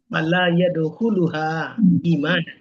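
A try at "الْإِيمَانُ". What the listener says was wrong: iman ini kasih baris.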